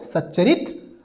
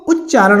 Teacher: पहले शब्द का अंतिम वर्ण त आए, दूसरे शब्द का पहला वर्ण च आए तो वह च के रूप में बदल जाता है। सत प्लस चरित बराबर सच्चरित हो जाता है, आधा च फिर च, सच्चा।